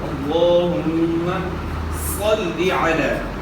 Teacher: یہاں اللہم کا لام پورا ادا ہوگا، موٹا ادا ہوگا۔ اللہم میم مشدد ہے، اس کے اندر غنہ ہوگا،